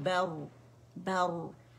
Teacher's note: रॉ सुकून से पहले फतह आ रही है, तो रॉ मोटी पड़ जाएगी , बर बै बारीक है, बा को मोटा नहीं करेंगे, ठीक